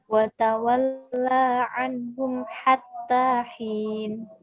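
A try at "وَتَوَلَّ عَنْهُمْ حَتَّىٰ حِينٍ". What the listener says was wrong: Hati-hati, lanya pendek, maka harus dibaca cepat. Watawalla anhum.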